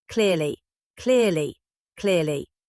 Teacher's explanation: Feel the C L at the beginning. Your tongue touching the ridge just behind your upper teeth, then pulling away as the R follows. Feel the L Y at the end.